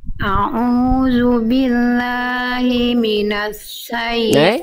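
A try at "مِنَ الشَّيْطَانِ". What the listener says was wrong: Bukan minasyaiton, jangan sin, bukan minasa, tapi minasya. Tengah lidahnya naik. Sya. Tengah lidahnya naik.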